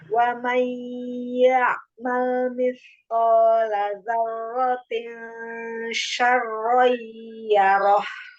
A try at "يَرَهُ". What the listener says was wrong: Kadang suka terselip haknya. Ketika ro, jangan lupa ditebalkan.